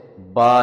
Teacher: बा का मखर लिप्स है यह दोनों होठों को मिलाने से पैदा होता है दोनों होठों को जेंटली क्लोज करें तो यहां से बा निकलता